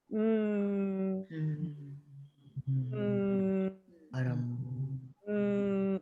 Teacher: so so you two things that are different here is that your lips are fully closed like really hard and the vibration sound is coming from your your neck right your vocal cords